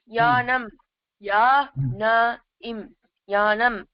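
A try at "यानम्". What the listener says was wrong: யானம் நீ அதை பிரிச்சல கண்ணா. யா நம் நம் அப்படியே சேர்த்து சொல்லிடு கண்ணா.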